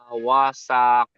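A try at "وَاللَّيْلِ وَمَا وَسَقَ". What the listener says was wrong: জি ওয়াসাক বলে সিন টান হয়ে যাচ্ছে, সিন টান হবে না, ওয়াসাক হ্যাঁ।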